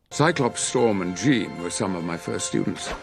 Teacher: la palabra of va a sonar como un simple schwa.